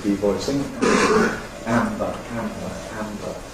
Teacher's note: voicing throughout, yes, voicing throughout here, no reason for any devoicing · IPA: [ˈæmbə]